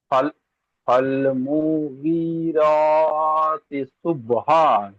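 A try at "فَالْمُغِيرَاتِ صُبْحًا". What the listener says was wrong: ফাল মু টান হয়ে যাচ্ছে, মুটা টান হয়ে যাচ্ছে। ফাল মুগি, গয়েন টান হবে, র টান হবে।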